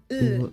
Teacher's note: a light L that is more pronounced with the tip of your tongue